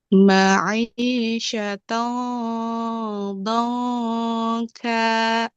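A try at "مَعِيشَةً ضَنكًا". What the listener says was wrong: tipiskan Bu ya. Do kan. Do, ya, pas waktu dot ke nun, nunnya waktu diikhfakan ke kaf tipis.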